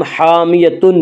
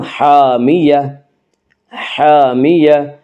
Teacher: گول تا وقف کی صورت میں ہائے ساکنہ بن جاتی ہے، یعنی گول تا کے اوپر جب وقف کرتے ہیں تو وہ ہائے ساکنہ بن جاتی ہے۔ ہائے ساکنہ کہ اس ہا کو جس کے اوپر جزم ہو۔